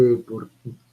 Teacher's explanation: dentalizo la R porque es antes de T